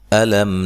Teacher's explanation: حمزہ کو تحقیق سے پڑھنا ہے، نرم ادا نہیں کرنا۔ لم میم ساکن کا یہاں اظہار ہے، غنہ نہیں کریں گے۔